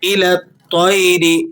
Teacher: تو حروف مستعلیہ میں سے ہے، ہمیشہ موٹا پڑھا جاتا ہے. 8 حروف ایسے ہیں جو ہر حال میں موٹے کر کے پڑھے جاتے ہیں، ان میں سے تو بھی ہے.